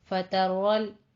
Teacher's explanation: رول رو پر ہے، لام باریک رہے گا لیکن اس پہ قلقلہ بھی نہیں کرنا، ساکن کرنا ہے.